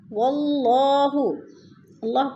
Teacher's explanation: اللہ سے پہلے لفظ واو کے اوپر زبر ہے تو اللہ کو پر کر کے پڑھیں گے